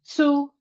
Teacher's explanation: Some people said su with a TS.